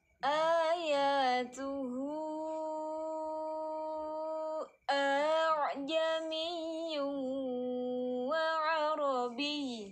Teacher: Nah, kalau a'jami yang keduanya baru ini tashil ya. Bacanya digelombangkan gitu. Jangan dipanjangin, digelombangkan. Jadi hamzah dulu menggelombang, baru bunyi ain.